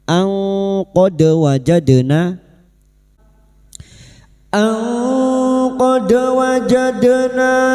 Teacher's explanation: Wajadna na fathah diikuti alif dua harakat kita panjangkan